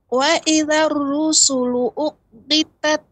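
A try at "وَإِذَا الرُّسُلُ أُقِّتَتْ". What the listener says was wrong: Nah, ra namun dibaca dengan tebal. Wa idzar rusulu.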